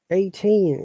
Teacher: stressing the second part of the word